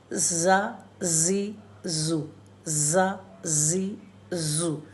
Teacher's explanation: जा इसमें बजिंग आती है जब भी इसको पढ़ते हैं